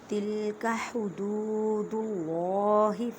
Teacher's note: اللہ کے لفظ کو موٹا پڑھیں کیونکہ اللہ کے لفظ سے پہلے دال پیش ہے، اس وجہ سے جب اللہ کے لفظ سے پہلے زبر یا پیش آ جائے تو اللہ کے لفظ کو موٹا پڑھتے ہیں۔